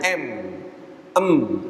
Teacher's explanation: masuk ke rongga hidung Nah kalau kita pencet hidung kita nih buktinya bahwa mim itu keluar dari hidung